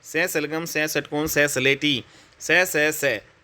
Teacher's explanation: इसमें कोई कंपन नहीं निकल रहा है दोस्तों, हालांकि वायु जो है यहाँ पे अधिक निकल रही है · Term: अघोष